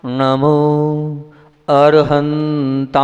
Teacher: मैंने जीभ से मा निकाला है होठ से नहीं निकाला है